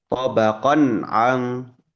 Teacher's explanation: Kemudian halqi dimaknai dengan keterlibatan huruf tenggorokan. Salah satu huruf tenggorokan di situ yang terlibat adalah huruf ain, gitu ya, tenggorokan tengah. Nah, itu izhar halqi. · Antara dua belah pihak ya, yaitu fathah tanwinnya bunyi nun sukun pada tanwin tobakon itu jelas dan huruf ain pun dibaca jelas tanpa melebur dengan eh, bunyi nun atau tanwinnya ya, tidak saling melebur.